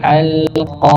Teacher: makhrajnya atau tempat keluarnya di pangkal lidah, bukan dua bibir. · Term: huruf qaf